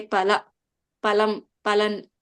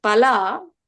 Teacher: alpa prana, okay, instead of mahaprana